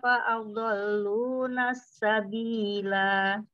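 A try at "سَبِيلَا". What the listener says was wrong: sabila pendek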